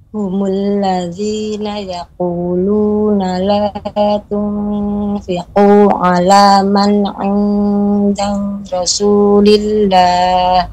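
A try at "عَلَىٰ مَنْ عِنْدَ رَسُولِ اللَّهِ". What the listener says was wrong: Jangan ada jeda Ummu. Ala man 'inda Rasulillah. Naam, la tunfiqu.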